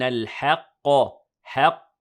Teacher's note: the ha is light and the qaf is heavy